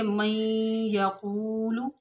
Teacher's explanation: व मिनन नासी मन यक़ूलु, मन यक़ूलु में नून साकिन के बाद हरूफ यरमलून के 6 हरूफ से या है, तो यहाँ पर इदगाम माल गुन्ना होगा, यानी मीम का या में हम इदगाम भी करेंगे और थोड़ी देर नाक में आवाज़ बंद करेंगे, गुन्ना भी करेंगे।